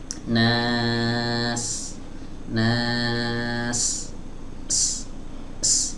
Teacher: huruf sin keluar dari ujung lidah ya, bertemu dengan dinding bagian dalam ya, atau bagian bawah dari dinding dalam gigi seri bawah ya, dan suaranya keluar dari celah kecil antara gigi seri atas dan gigi seri bawah.